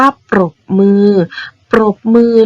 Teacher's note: เวลานักเรียนอ่านออกเสียงเราต้องอ่านออกเสียงตัวรอเรือควบม้าด้วยนะคะ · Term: คำควบแท้